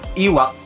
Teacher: Vokal I, vokal depan tinggi tak bundar. Cara pelafalannya dengan dorong sudut bibir ke dalam dengan bentuk mulut seperti corong.